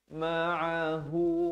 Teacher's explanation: Ma'ahu, hu di pangkal kerompong dua harakat.